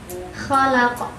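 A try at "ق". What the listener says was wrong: Kofnya kurang jelas, tapi nggak masalah, kita bahas sebentar lagi.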